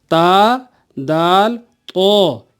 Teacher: ज़ुबान की नोक जब ऊपर के दांतों की पीठ पर लगे या पुश्त पर लगे तो ता, दाल, तो, ये तीनों हुरूफ पढ़े जाते हैं।